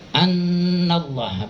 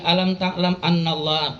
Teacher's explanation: nun ada tasdid, itu harus ditahan dulu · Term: huruf gunnah